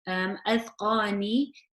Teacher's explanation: the qaf is heavy, and then I would stretch the qaf because of the alif with the fatah before it. Adqani, fahum.